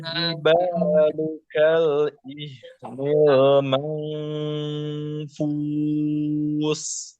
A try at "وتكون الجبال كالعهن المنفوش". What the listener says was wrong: Shin ya, jangan jadi sin. Manfush. Fush.